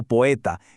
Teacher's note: juntamos en una sola sílaba dos vocales que normalmente irían separadas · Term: sinéresis